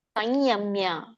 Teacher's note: ಸಂಯಮ್ಯ, ಮುಗಿಂದ ಯ ಬರುತ್ತೆ